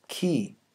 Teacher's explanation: the consonant represented by the letter k is a velar stop the air is completely obstructed at the velum and then the tension releases into the front high valve e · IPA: [k]